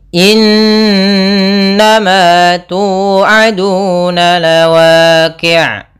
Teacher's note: Aduna ada mad tabi'i, dhamma bertemu alif, bertemu waw. Panjangnya 2 harokat keseluruhannya.